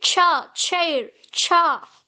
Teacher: plosive ta is followed with a sha sound, right? A fricative. This is why it is called affricate sound.